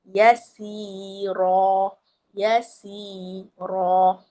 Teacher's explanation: >> Ra tebal. >> Ha dia panggil ra tafkhim. A tafkhim tu teballah.